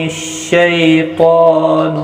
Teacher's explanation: یکون الشیطان، شین یا زبر شی، یا لین ہے، تھوڑا نرمی کے ساتھ کھینچ کر ادا کریں گے۔ طا حروف مستعلیہ ہے، پر پڑھا جائے گا، اس کے اوپر کھڑی زبر بھی ہے، ایک الف کی مقدار کے برابر کھینچ کر پڑھیں گے